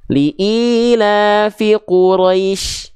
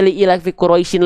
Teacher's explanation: Huruf shin-nya tetap dibaca, tapi dalam keadaan sukun atau sering kita sebut dengan mati. Dibaca dengan keadaan sukun atau mati, teman-teman sekalian. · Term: huruf shin sukun